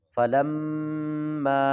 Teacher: فلما پر غنہ بھی کرنا ہے، اس کو مد بھی ہے، لمبا بھی کرنا ہے